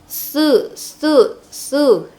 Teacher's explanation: Tu haddisu hati-hati itu bukan su tapi su ujung lidah kita itu keluarnya su su nah ujung lidah bertemu dengan gigi seri atas depannya